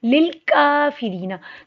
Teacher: काफ मरकज़ वाला बारीक पढ़ा जाता है, काफ पे खड़ी ज़बर है, एक अलिफ के बराबर लंबा होगा। · रॉ को बारीक पढ़ेंगे, रॉ के नीचे ज़ेर है, रॉ चाहे मोटी हो बारीक हो, इस पे डबल साउंड आता है, र की आवाज़ आनी चाहिए। री को लंबा करेंगे, जिस्म वाली या से पहले ज़ेर है, हरूफ मद्दे, एक अलिफ के बराबर लंबा होगा। नून ज़बर ना, इसको लंबा नहीं करना।